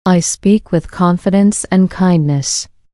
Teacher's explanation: The words speak confidence and kindness are the strong beats in this sentence.